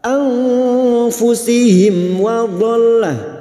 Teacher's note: mim sukun bertemu wawu idhar safawi, mim sukun dibaca jelas tanpa mendengung